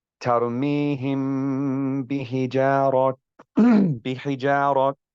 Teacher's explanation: The sound of the ghunna remains with the concealed letter and is not with the sound of the letter at which it is concealed